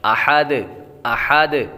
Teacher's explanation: جب یہاں پر وقف کریں گے تو دال ساکن ہوگی، اور حروف دال حروف قلقلہ میں سے ہے، اور جب حروف قلقلہ ساکن ہوں تو ان میں خوب قلقلہ ظاہر ہوگا۔